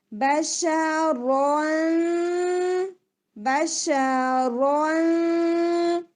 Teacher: इख्फा light होगा क्योंकि सीन आ रहा है, बशरन बशरन। टंग आपकी कहीं पे भी ऊपर नहीं लगनी चाहिए, बिल्कुल स्ट्रेट डाउन होगी, बिल्कुल लाइट। टिप आपकी सीन के मखरज के पास होगी और नाक में आवाज जाएगी